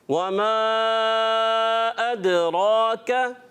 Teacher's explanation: दाल में कलकला अदा करेंगे, रा को पुर रखेंगे